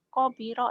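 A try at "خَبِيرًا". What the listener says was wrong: Hobi orang Jawa, khonya jadi kobiro. Ingat pertama datang, kobiro. Khoir. Khobiro ya.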